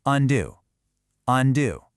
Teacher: Do you hear how that second part is louder and much stronger? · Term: stress